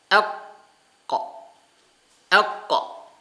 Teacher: huruf qaf keluar dari pangkal lidah bagian belakang